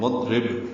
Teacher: ضاد ساکن پہ اظہار را باریک اور با ساکن پہ قلقلہ